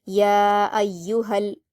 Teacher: ہا پر الف مدہ ہے، یا ایوہا، لیکن آگے دیکھیے حروف قمری میں سے کاف آیا ہے اور اس سے پہلے الف لام ہے تو اس لیے لام کے جزم کے ساتھ ہا کے زبر کو ملا دیں گے